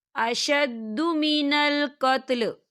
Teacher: وقف کی صورت میں لام ساکن ہو جائے گا